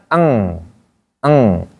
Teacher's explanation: membaca eng, maka pastikan eng itu agak lama sedikit. Jangan cepat-cepat, jangan. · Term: ikhfa